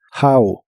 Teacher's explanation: la o de how se pronuncia como a